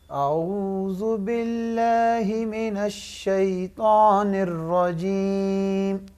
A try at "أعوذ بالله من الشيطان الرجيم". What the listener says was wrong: الشیطان اور طاء، یہ نون کا غنہ جو ہے وہ الف میں نہیں آنا چاہیے، نہ ہی طاء میں آنا چاہیے۔